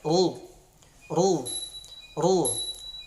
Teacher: Sementara berbaris dhammah, ro-nya kita tebalkan atau kita tafkhimkan.